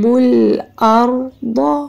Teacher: را سے پہلے اگر زبر ائے تو اس کو ار پر کر کے پڑھتے ہیں موٹا کر کے